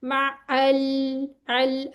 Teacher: लाम साकिन को हिलाना नहीं है, थोड़ी सी देर इसके मखरज पे रुक जाएं, माअल, अल, अगर आप करेंगे ना माअल, वो इस तरह हो जाएगा, फौरन छोड़ देंगे मखरज तो हिल जाएगा।